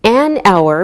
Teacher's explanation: we say an hour because we don't pronounce the H so it sounds like a vowel sound